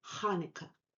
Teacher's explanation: the hard guttural h, a sound that does not exist in English. It is pronounced like the Hebrew het as in Hanukkah.